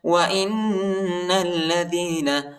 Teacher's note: نون کو لام کے ساتھ ملائیں گے، الف نہیں پڑھا جاتا، الف پر حرکت نہیں۔